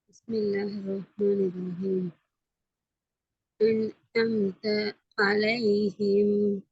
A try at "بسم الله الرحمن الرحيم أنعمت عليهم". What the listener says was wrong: அந்த அந்த நீட்டுறது பிழையே வருது இல்லையா? ஐனும் வரல, இன்னும் தொண்டையால வரல. ஆலைஹிம் போன கிளாஸ்ல சொல்லி காட்டணும் இப்படி வரணும்ன்றலாம்.